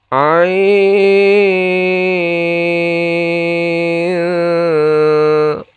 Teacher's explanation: Nah, ain panjang 6 harokat lalu dibaca ikhfa.